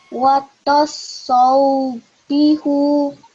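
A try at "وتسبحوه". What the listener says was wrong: No, that's still Dhamma. So watu. Watusobbihu.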